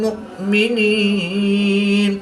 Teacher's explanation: हमजा साकिन है तो इसको हम झटका देकर पढ़ेंगे।